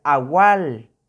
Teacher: Se prolonga el sonido de la letra A.